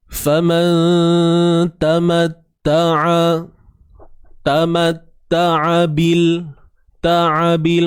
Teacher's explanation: Huruf ain ni kena sempitkan di bahagian tengah kerongkong kita.